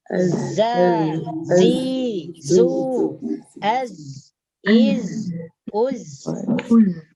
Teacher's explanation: Kalau za, lidah menyentuh gigi bagian bawah.